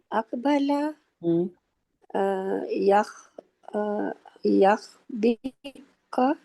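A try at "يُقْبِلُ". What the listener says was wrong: یقبلو. دیکھیں آپ کے منہ سے نہیں نکل رہا. اس کو جب تک یق نہیں کریں گی وہ نہیں نکلے گا, یک نہیں نکلے گا یہاں پہ. یقبلو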